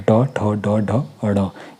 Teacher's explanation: वे वर्ण जिनका उच्चारण जीभ के मूर्धा यानी कि कठोर तालु का जो ऊपरी भाग होता है उसको स्पर्श करने पर होता है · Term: मूर्धन्य वर्ण